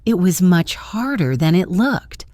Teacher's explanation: The word than is often reduced to thun and it links to looked.